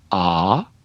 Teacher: in broadly southern English it gets pronounced ah